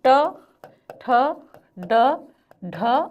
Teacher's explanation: ट वर्ग मतलब कि रेट्रोफ्लेक्स मतलब कि कठोर तालु। कठोर तालु मतलब कि नाक के नीचे का हिस्सा।